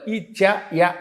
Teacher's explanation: ఇచ్చు యశానాం తాలుహు తాలవ్యంతో పలకాలి